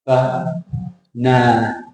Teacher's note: So the shape of that word is small, big, small.